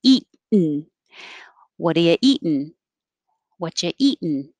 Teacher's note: now this T can disappear because you're saying eat and your tongue is in the T position, which is the same as the N position.